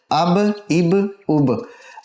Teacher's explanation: با حروف قلقلہ میں سے ساکن ہونے کی وجہ سے یہاں پر قلقلہ ہو رہا ہے